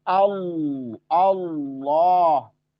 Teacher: begitu masuk Allah langsung terjadi ee penebalan suara di situ